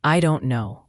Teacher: This is very common. The T in don't is often not pronounced, or it's a very light glottal stop, meaning you stop the air in your throat briefly.